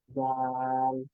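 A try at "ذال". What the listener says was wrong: যাটা যখন আপনি দাল প্রথমটা উচ্চারণ করছেন তখন আপনার জিভ ভেতরেই থাকছে, জিমের মতো শোনাচ্ছে। এটা কি বুঝতে পারেন যে জি একটু শক্ত হয়ে যাচ্ছে? হ্যাঁ, আপনি জিভটাকে একটু বের করেন।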